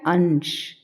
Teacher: अ के तुरंत बाद न की आवाज आ रही है ना वही अनुस्वार की आवाज है